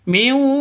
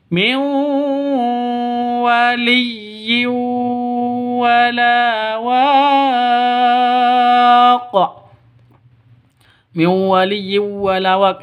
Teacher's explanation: Min waliyi nun mati bertemu dengan wau. Cara bacanya masuk ke wawu ya. masuk ke wawu mewu seperti itu disertai dengung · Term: idgham bighunah